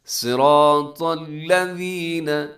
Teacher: صاد موٹا ہے، را موٹا ہے، طا موٹا ہے، صراط الذین، الذین میں اس کا خیال کرنے سے اکثر لوگ الذین کر دیتے، تو الذین نرمی کے ساتھ پڑھنا ہے آپ نے، سیٹی نہ ہو۔